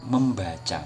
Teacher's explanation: M merupakan nasal bilabial yang sedaerah artikulasi dengan B. Jadi M itu nanti gabungannya dengan B ya.